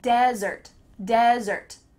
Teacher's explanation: In fact, the emphasis is on the first part, desert.